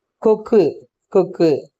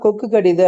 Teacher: அந்த கொக்கு அப்படின்னு சொல்லுகின்ற அந்த உகரத்தை விட நம்ம கொக்கு கடிது அப்படின்னு சொல்லும் பொழுது உகரம் இன்னும் மேலும் குறைவதை நம்மளால உணர முடியும் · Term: குற்றியலுகரம்